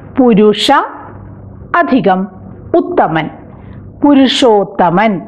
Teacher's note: പുരുഷ അ എന്ന സ്വരത്തിൽ അവസാനിക്കുന്നു, ഉത്തമൻ ഉ എന്ന സ്വരത്തിൽ ആരംഭിക്കുന്നു. അ അധികം ഉ ഓ പുരുഷോത്തമൻ. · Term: ഗുണസന്ധി